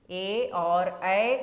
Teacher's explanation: ए और ऐ का उच्चारण स्थान कंठ और तालु है।